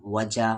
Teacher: واو پہ زبر وا، جیم کے ساتھ الف جا، وجا مد کے سمبل کے بعد حمزہ ہے، یعنی اس مد کو 3 سے 4 الف کے برابر کھینچیں گے